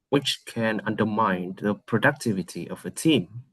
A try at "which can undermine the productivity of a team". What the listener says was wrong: Too short. You did not elongate any of the ending sounds.